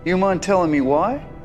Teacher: the native speakers usually drop the word do, so the sentence starts with you mind? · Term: reduction